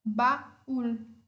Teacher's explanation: uma vogal aberta e uma vogal fechada tônica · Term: hiato